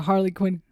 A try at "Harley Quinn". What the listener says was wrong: Well, you're saying it like Harlequin. you're saying it like Harlequin, which is a genre.